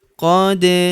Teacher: Huruf da berharakat sukun kita pantulkan atau kita qalqalahkan